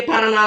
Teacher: A sílaba tônica mais forte é a última e termina em A.